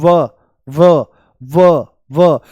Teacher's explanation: और व जो है हमारा इसका उच्चारण होता है दंत ओष्ठ है ना दांत ये दंत ओष्ठ है दंत ओष्ठय दांत और होठ दोनों से इसका उच्चारण होता है जैसे बोल दो व व व तो जो ऊपर वाले दांत हैं ये होठों से मिल जाते हैं · इसके उच्चारण में दांत होठों को स्पर्श करते हैं।